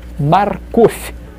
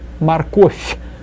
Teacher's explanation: V at the end is read as f, softened.